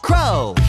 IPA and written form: krəʊ (crow)